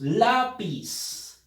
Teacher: la fuerza de voz está en la penúltima sílaba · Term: palabras graves